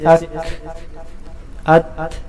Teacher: ہمس معمولی سی آواز کو کہتے ہیں۔ ہمس کی ادائیگی میں سانس جاری رہتا ہے، جیسے اک، ات، مگر ہمس میں اتنی زیادتی نہ ہو کہ آخر میں ہا کی آواز پیدا ہو جائے، جیسے ات، اک، ات، اک، اور نہیں بالکل آواز بند کی جائے، جیسے ات، اک۔